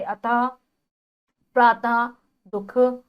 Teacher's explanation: इसका उच्चारण करते समय आधे ह की ध्वनि निकलती है। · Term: विसर्ग